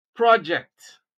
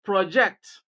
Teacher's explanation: Place stress on the first syllable and what you have is a noun, project. Place stress on the second syllable and what you have is a verb, project.